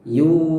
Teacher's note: huruf ya yang berharokat dhammah itu kemudian diikuti dengan waw sukun, maka itu termasuk waw mad. Jadi yu-nya panjang 2 harokat atau 1 ayunan.